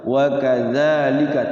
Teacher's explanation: 4 hurufnya tidak boleh dibaca panjang. 1 hurufnya yang za itu wajib dibaca panjang 2 harokat 1 alif. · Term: Mad tabi'i